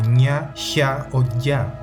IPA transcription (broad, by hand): ɲa ça o ʝa